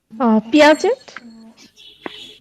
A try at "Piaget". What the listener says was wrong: পিয়াজে। আর ইয়া, ওটা টি উচ্চারণ হবে না, টি অ্যাবসেন্ট থাকবে। C, this is the problem with our students, because they have the silent sound but we do not have, সেজন্য আমরা পুরোটাই উচ্চারণ করে ফেলি।